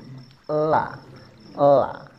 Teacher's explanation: bukan di gusi, bukan di gigi, tapi di langit-langit mulut yang bagian depan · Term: huruf lam